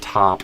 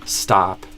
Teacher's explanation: the amount of air that comes out with a T for like top versus stop, whether there's a S before the T or not, and again, depends on stress and stuff a bit.